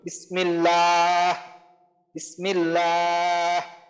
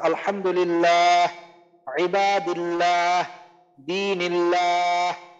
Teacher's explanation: আল্লাহ শব্দের লামের আগে জের আছে, এর জন্য আমাদের লামকে কি করতে হবে পাতলা করে পড়তে হবে